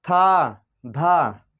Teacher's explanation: था और धा जो है इनको भी बोलने में अधिक वायु लग रही है, यानी कि तीव्र गति से निकल रही है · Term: महाप्राण ध्वनियाँ